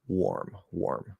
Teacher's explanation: warm, WARM, is actually pronounced with an R colored O. Probably because in the unmerged version it's or.